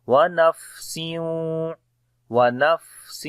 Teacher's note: فا کے اوپر صفت ہمس ہے اور سانس جاری ہوگا